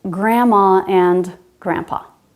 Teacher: It's not uncommon to drop the D after N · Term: silent D